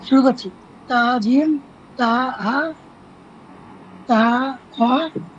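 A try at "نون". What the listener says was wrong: তা কেন? নুন, এই যে দেখছেন, তা হলে, তাহলে যে একসাথে হবে, একসাথে হবে।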